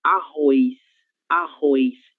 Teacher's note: En algunas regiones de Brasil, en verdad, en la mayor parte de Brasil, la gente va a leer arroz, arroz, como si hubiera una I entre la O y la letra Z